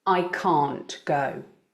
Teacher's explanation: with the negative both the words can't and go are stressed